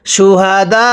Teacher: ওয়াকফের সময় আমরা এখানে চার আলিফ টান দিব, কিন্তু হামজার উপর পেশকে বাদ দিয়ে হামজার উপর সাকিন দিয়ে পড়ব।